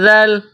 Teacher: ذال زبان توڑی باہر نکالیں گے، ذال کو نرم پڑھیں گے۔ ذال کے اوپر زبر ہے، اس کے بعد ہے لام، لام کے اوپر جزم ہے۔